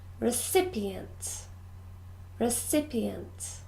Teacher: we stress the second syllable